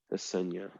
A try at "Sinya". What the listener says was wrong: the H. The H is silent. So Sinya.